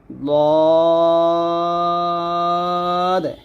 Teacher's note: সেখান থেকে উচ্চারণ করলে হবে না দ হচ্ছে মারির দাঁতে লাগবে জিহ্বার গোড়ার কিনারা উপরের মাড়ির দাঁতের গোড়ার সঙ্গে লাগিয়ে দটা মোটা করে উচ্চারণ করতে হবে